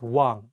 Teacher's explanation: you don't pronounce the ieung at the beginning of the word. Only say the wa and pronounce the ieung at the end of the word as ng. So all you need to remember is that if the ieung is at the beginning of the word, it has no sound.